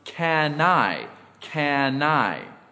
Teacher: I have this linking can I have this in this example the N is transferred or Blended onto the next word I it is pronounced can I can I example two and I